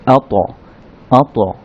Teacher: ততে যদি সাকিন হয় তখন সেটা বা ডাল এগুলোর মতো কলকলা হবে, অর্থাৎ সাউন্ডটা রিভার্ভ হবে, সাউন্ডটা আবার ফিরে আসবে